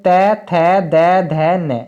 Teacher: दंत का मतलब है जिन्हें बोलने में जीभ हमारी दांतों से टकराती है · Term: दंत व्यंजन